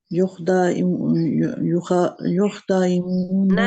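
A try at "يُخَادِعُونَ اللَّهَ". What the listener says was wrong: नहीं, नहीं, फिर गौर से देखें, खा के आगे अलिफ है। युखादिऊनल्लाह नल्लाह, नल्लाह जहाँ पे जोड़ेंगे ना, युखादिऊनल्लाह।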